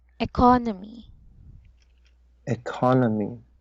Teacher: the stress of this word should be on the first part